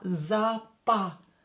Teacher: Pa, not po here. Because O is not stressed, we will pronounce it as A.